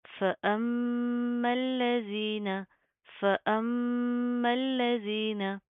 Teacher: زال کے اوپر زبان باہر کی طرف آئے گی نرمی سے ادا ہوگا